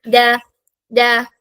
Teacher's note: നാവിന്റെ അറ്റത്ത് എവിടെ ടച്ച് ചെയ്യണം മുകളിലത്തെ മുന്നിലെ രണ്ട് പല്ലിന്റെ ആ ബാക്ക് സൈഡിൽ ആ ഒരു റൂട്ടില് ടച്ച് ചെയ്യണം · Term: ദാൽ